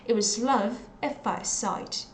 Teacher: So I didn't pronounce the t.